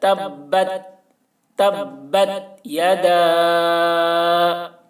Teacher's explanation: تبت، تا کو بہت ہی احتیاط کے ساتھ ادا کرنا ہے، یہاں پر قلقلہ نہ ہونے پائے، یعنی تبت یدا، تبت ایسے نہیں کرنا ہے، تا میں آواز ٹکرائے گی نہیں، آواز کو روک لینا ہے